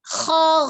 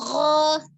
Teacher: kalau bunyi kho itu al-hams, tapi kalau gho itu jelas jahar, ya, kho-nya samar, gho-nya jelas.